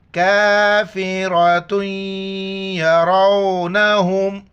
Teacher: تا کے اوپر جو تنوین ہے یا کے ساتھ ملائیں گے. یہاں پر ناک میں آواز بھی پیدا کریں گے. یا زبر یا، را وا زبر رو، نون زبر نہ، حامیم پیش ہم.